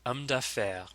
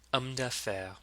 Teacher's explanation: Do you notice that you don't say the H sound? There's no in French, there is no sound. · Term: H's are silent